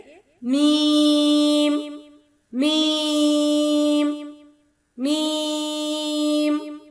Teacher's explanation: دونوں ہونٹوں کے اندرونی خشک حصوں کو آپس میں مکمل طور پر ملاتے ہوئے باریک آواز میں ادا کریں گے۔